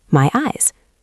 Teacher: The Y sound flows into the E. My eyes. It sounds like one long word.